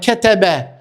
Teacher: ketebe nuk zgjasim asnjë zanore prej këtyre shkronjave të kësaj fjale